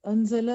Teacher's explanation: نون ساکن ہے اس کے بعد زا ہے تو اخفا ہے. اخفا کریں گے.